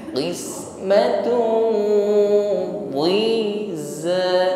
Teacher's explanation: Qismatun bukan di ya, sebagaimana huruf dal kasrah, bukan di tetapi qismatun dhiza. Sebelum zai terucapkan sudah ada shafir, ada desisnya za. · dhammah tanwin berhadapan dengan dhad ikhfa, samarkan tanwin pada huruf dhad disertai dengan dengung yang menebal. Qismatun bukan di ya, sebagaimana huruf dal kasrah, bukan di tetapi qismatun dhiza.